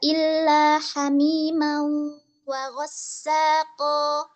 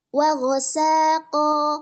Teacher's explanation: Nah, pada riwayat Syu'bah itu dibaca dengan wa ghasaqo dengan tahfiful sin. Jadi sinnya itu tidak bertasydid.